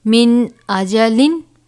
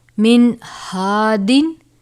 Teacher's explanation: میم، نون زیر من، حمزہ زبر آ، من آ، جیم زبر جا، من آجا، لام 2 زیر لن، من آجا لن. اب یہاں پر نون ساکن کے بعد حمزہ ہے. حمزہ کس میں سے ہے؟ حروف حلقی میں سے، لہٰذا یہاں پر اظہار ہوگا، مطلب ہم غنہ نہیں کریں گے